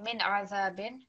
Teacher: we don't want to make any extra elongation on this noon sakin. So just very simply min azabin.